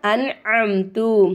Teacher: நூனே சாக்கின் வந்திருக்காமா அடுத்ததா ஐன் வந்திருக்கு நமக்கு இங்க இல்ஹாரு உடைய சட்டம் வருது அப்ப நம்ம நூனே சாக்கினை வெளிப்படுத்தி உச்சரிக்கணும்